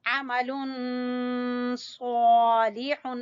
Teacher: स्वाद को पूर पढ़ना है · अमल आइन को वस्ते हलक से